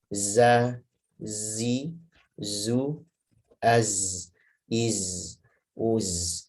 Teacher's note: Jadi zai itu jahar, rokhawah, dan sofir.